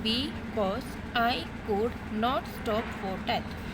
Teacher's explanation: For pronouncing B, you put less stressed, and for pronouncing cause, you put more stressed. So that's why first syllable is less unstressed and the second syllable is stressed. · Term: iambic